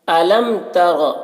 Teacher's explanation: میم میں اظہار شفوی ہوگا۔ اظہار شفوی میم کو ظاہر کر کے جلد پڑھیں گے